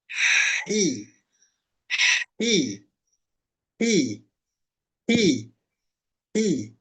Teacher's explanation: ujung lidahnya tempat tumbuh gigi saya di bagian bawah tengahnya naik pangkalnya turun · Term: kasrah